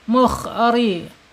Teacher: rnya dibaca tarqik atau tipis karena dia harakatnya kasrah